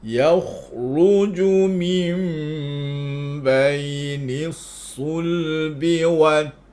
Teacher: Lam pada sul tu bagi jelas, lepas tu ta pada wattara tu nipis.